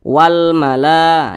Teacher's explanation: lam yang berjumpa dengan huruf qamariah yakni huruf mim Nah maka lam ini dibaca jelas jadi diizharkan walmala Jadi lamnya itu dibaca walmala kemudian la dibaca panjang nah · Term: alif lam qamariah